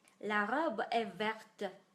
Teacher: As soon as we put the E at the end, we must, I repeat, we must pronounce that consonant.